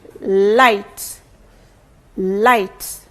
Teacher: the tip of the tongue blocks the air when it touches the pallet but then the air escapes through the sides or the blade of the tongue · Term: lateral